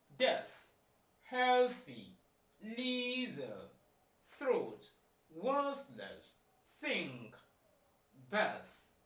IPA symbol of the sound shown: θ